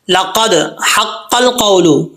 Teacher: دال میں قلقلہ ہے، قاف جو ہے وہ پر پڑھا جائے گا